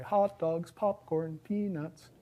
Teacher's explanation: There's this high-low tune that you sing when you're doing things like that.